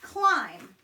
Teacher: at the end of a word that B is silent he doesn't say anything